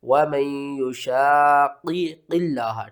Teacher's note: لفظ اللہ کو آپ نے یہاں باریک پڑھنا ہے، لفظ اللہ سے پہلے زیر ہے